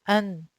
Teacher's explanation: Try to say an. Where did your tongue stop? The top of your mouth, right? Or specifically the gum of the 2 top front incisors. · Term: clear